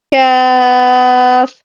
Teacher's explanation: یہ والا جو کاف ہے نا، کاف کتاب والا کاف یا کاف ڈنڈے والا جو کاف ہے، یہ باریک پڑھا جاتا ہے، ٹھیک ہے، اس کو ہم باریک پڑھیں گے۔